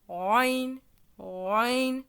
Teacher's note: pour le roin ici, l'air ne passe pas comme le ain. Le roin, en fait, on va imaginer vouloir dire la lettre ain, mais juste avec un r qui arrive par-dessus, mais comme si on voulait le cacher.